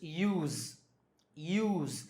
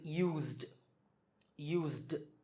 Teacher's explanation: this s becomes Z so use the past tense form is used